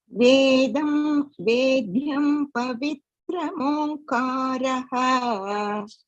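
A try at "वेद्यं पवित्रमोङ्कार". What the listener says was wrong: Very good.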